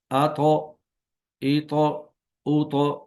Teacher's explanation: یعنی تا اور تا کا مخرج ایک ہے، زبان کی نوک اور ثنایا اولیہ کی جڑ، اور زبان کی جڑ کو تالو کی طرف بلند کریں گے۔ اس میں زبان کی جڑ کو بھی اوپر اٹھایا جاتا ہے تاکہ تو موٹا ہو جائے